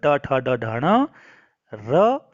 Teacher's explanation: ट वर्ग ट ठ ड ढ र और श षटकोण वाला, इन सब का उच्चारण स्थान क्या होगा हमारे पास, मूर्धा होगा